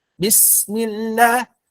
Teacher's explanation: Harusnya ketika melafalkan sin itu, biarkan huruf sin itu mengalir dulu. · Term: rokhawah